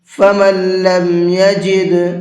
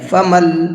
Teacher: فمن لم يجد فصيام 3 أيام في الحج و7 إذا رجعتم فمن لم يجد، یہاں پر یہ نون نہیں پڑھا جائے گا، میم کو ڈائریکٹ لام میں ملا کر کے پڑھیں گے، اس لیے کہ نون ساکن کے بعد جب کبھی بھی لام آتا ہے تو پھر نون کو لام کے اندر مکس کر دیتے ہیں، پھر نون نہیں پڑھا جاتا ہے، لام ہی پڑھا جاتا ہے۔